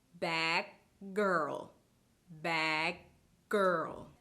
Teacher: I held the stop part of the g sound for longer than usual before I let out the plosive.